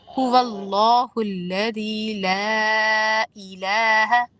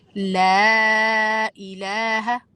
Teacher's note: اب اس کے ادھر آپ کے پاس آپشن ہے، اس چھوٹے مد میں آپ کو لازماً دو الف کے برابر تو کھینچنا ہے، اور اگر آپ 4 کے برابر کھینچ دیں تو بہت خوبصورت لگے گا